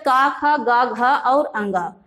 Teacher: कंठ्य वर्ण, कंठ से उच्चारण होने के कारण इन्हें कंठ्य वर्ण कहा जाता है